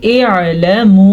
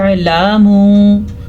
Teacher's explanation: देखें पहले मैंने अलिफ की आवाज़ निकाली और फिर मैंने आइन की आवाज़ निकाली। लाम के ऊपर ज़बर है, लाम को लंबा नहीं करना आपने। अक्सर लोग ज़बर ज़ेर पेश को लंबा करते रहते हैं, यानी कि पढ़ते हैं एलामू।